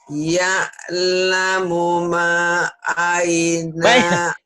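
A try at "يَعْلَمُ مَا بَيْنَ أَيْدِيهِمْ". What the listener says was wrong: Kok aina? Bainanya nggak dibawa. Ya'lamu baina, Bu.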